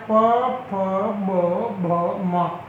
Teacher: जब इनको बोलते हैं तब हमारे होठ होते हैं वो एक तरह से मिल जाते हैं, इसलिए इस ध्वनि को बोलते हैं ओष्ठव्य।